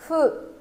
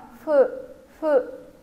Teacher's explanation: Ở đây phiên âm là phụ nhưng mà thực ra là nó đọc giữa âm F và âm H. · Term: âm phụ